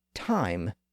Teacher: Even though we might think of the I sound as a single vowel because we spell it with a single letter, it's actually two sounds put together. It's the ah sound followed by the E sound. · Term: modern I sound